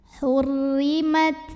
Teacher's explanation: Tapi dipermudah dengan adanya sifat lain dari segi udara, yaitu sifat hams yang artinya keluar angin. Jangan lupa keluarin angin di ta. Anginnya keluarnya belakangan untuk ta yang sukun.